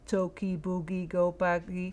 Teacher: one after the other it's very important saw stress it again there were no pauses there was no stress no prosody